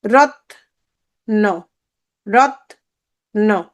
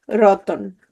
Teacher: হয়ে গেল রতন, তাহলে এর সাথে এখন কি আছে, রতন, তাহলে এর সাথে কি যুক্ত হলো, অ আসে। এই যে সংযুক্ত ব্যঞ্জন ধ্বনির মাঝখানে কি আসছে, স্বরধ্বনির আগমন ঘটেছে